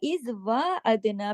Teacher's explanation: इज वा अदना पे देखिए, वहां पे खड़ा जबर है, अदना के ऊपर दाल जो है कलकले वाला है, जज्म के साथ है।